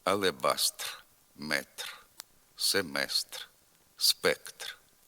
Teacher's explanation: на кінці слова після глухого приголосного звук р знеголошується